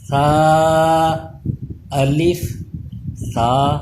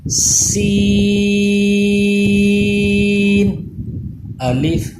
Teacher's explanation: اس پہ سیٹی کی آواز پیدا نہیں ہونی چاہیے، وہ سین پہ پیدا ہوتی ہے، اور سیٹی کی آواز کو روکنے کے لیے کیا کیا جاتا ہے کہ زبان کو اوپر کی دانتوں سے چپکا کے پڑھیں گے۔